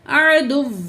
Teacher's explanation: دال کی پیش کو واو تشدید سے جوائنٹ کر کے پڑھیں گے.